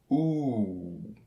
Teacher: This vowel sound is produced with the tongue near the top and back of the mouth, and with the lips rounded into a small O. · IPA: [u:]